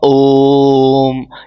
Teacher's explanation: दीर्घ से भी अधिक समय लगता है।